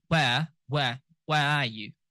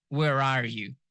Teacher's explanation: if you're British, you will not be pronouncing the R.